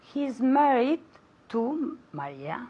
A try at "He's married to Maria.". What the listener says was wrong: Now, la S mosca en his, no la he oído. I didn't hear it.